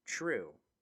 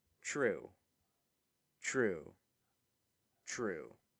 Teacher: Normally, I would pronounce this something like true, since the R that I use is retroflex, meaning the tip of the tongue is curled behind the body, and this makes the T sound unstable, and it palatalizes to ch